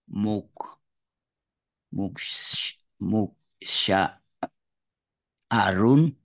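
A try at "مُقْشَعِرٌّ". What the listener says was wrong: Lagi Ustaz. Di kasrah. Muksyai. Muksyairun. Iksya. Ini yang salah Ustaz. Harusnya itma'inna. Berarti iksya. Iksyairro. La taksyai. Nah, Muksyaarun. Muksyar.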